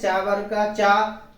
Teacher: जब उच्चारण करते हैं चा वर्ग का चा, तो जिह्वा हमारी ताल में जाके टच होती है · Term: तालव्य